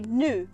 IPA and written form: nu (new)